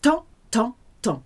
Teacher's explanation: You cannot hear the M, you cannot hear the P, you cannot hear the S.